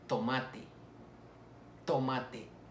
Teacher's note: las dentales es decir intervienen los dientes y la lengua